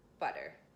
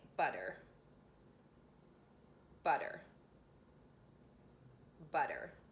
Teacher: I briefly touched the roof of my mouth with the tip of my tongue, butter. It's so brief, it's almost as though I didn't say it, and it's really fast, so you just have to keep practicing this one.